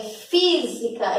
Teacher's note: É física, então obrigatoriamente eu tenho que colocar um acento, porque é a terceira sílaba de trás para frente mais forte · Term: proparoxítona